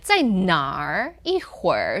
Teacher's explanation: for the 兒, often it does go down.